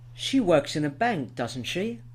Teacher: the intonation can go up on the tag, which is a rising intonation, or it can fall, which is a falling intonation.